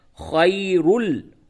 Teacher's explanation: ہوگا، تنوین کے بعد لام حروف یرملون میں سے آیا ہے، ادغام بلا غنہ ہوگا، اور را کو پر کر کے پڑھیں گے